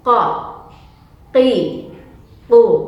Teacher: pangkal lidah atau belakang lidahnya diangkat ketika mengucapkan huruf ini